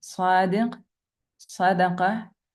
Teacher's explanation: صاد is pronounced heavily. It fills the space of the mouth. The root of the tongue is raised upwards.